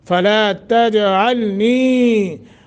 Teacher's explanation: جیم ساکن ہے، قلقلہ کریں گے، علنی نی حروف مدہ تو یا ساکن ما قبل کسرہ ہے، ایک سیکنڈ کی مد کریں گے۔